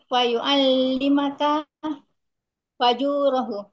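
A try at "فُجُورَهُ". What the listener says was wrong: Bukan fa. Bukan fa. Nah, fujur, dukhul, khuruj, julus.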